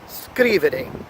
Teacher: As opposed to now verbs ending in ere, we have scrivere. The emphasis falls at the beginning of the word, all right, the first syllable of the three.